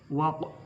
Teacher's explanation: Waq itu qalqalah sugro huruf qaf mati